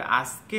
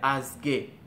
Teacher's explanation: ক এর স্থলে ককে ওরা গ এর মতো করে উচ্চারণ করতেছে